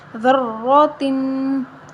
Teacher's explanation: دال را زبر ذر، را زبر را ذرا، تا دو زیر تن، ذراتن۔ را کے اوپر زبر ہے تو ہم را کو موٹا پڑھیں گے، دال کو نرم پڑھیں گے